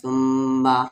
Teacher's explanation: میم پہ تشدید آ گیا یعنی غنہ ہوگا